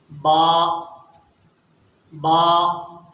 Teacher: با کی ادائیگی کے لیے ہمیں دونوں ہونٹوں کو بہت ہلکے سے، نرمی کے ساتھ ملانا پڑے گا